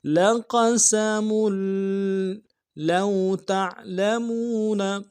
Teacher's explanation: قوف کو موٹا ادا کرنا ہے، سین کو سیٹی باریک ہوگی، میم کی تنوین کو آگے لام کے ساتھ ملانا ہے ، لام کے اوپر تشدید زور دیں گے۔ لَقَسَمٌ لَوْ تَعْلَمُونَ،